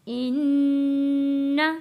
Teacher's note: نون کے اوپر تشدید ہے، نون کو غنہ کر کے پڑھیں گے